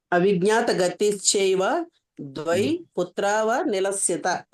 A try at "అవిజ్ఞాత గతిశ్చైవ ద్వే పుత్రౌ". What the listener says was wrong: ద్వే పుత్రౌ అనాలి. పుత్రావనిలస్య అని చదవకూడదు. పుత్రౌ అక్కడ ఆ వా ఉంది చూడండి, అది ఓ అవుతున్నమాట. పుత్రౌ అంటే ద్వివచనం అన్నమాట.